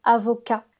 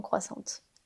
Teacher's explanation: elle a prononcé le T alors qu'il ne faut pas le prononcer